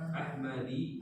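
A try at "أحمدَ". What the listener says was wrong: Ahmada. Tidak boleh tanwin, tak boleh kasro.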